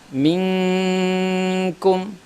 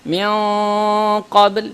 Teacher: Dia lebih dekat kepada izhar, yang mana izhar adalah tidak ada dengung tambahan · Kita sudah jelaskan huruf-huruf izhar adalah huruf-huruf al-halq, ya, huruf-huruf tenggorokan. Sedangkan qaf dan kaf adalah keluar di pangkal lidah yang dekat tenggorokan. Maka huruf-huruf ini dekat kepada huruf-huruf izhar, sehingga makhraj kedua huruf ini agak jauh dari makhraj an-nun. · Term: Dengungnya lebih rendah, ikhfa lebih rendah